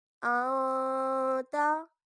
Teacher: اب یہاں پر ہم غنہ کریں گے کیونکہ تا حروف اخفا ہے